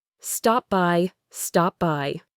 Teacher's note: we don't release a puff of air for the P in stop. You close your lips to make the P sound and then you open them to say the B sound in by.